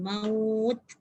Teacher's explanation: dengar tak saya punya bunyi ta tu berangin? Maut. Ada angin tapi dia ikut suara sekali, suara tak boleh.